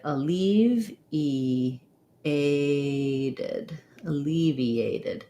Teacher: lot of vowels in a row here so e a diphthong this t is flat sounds more like a d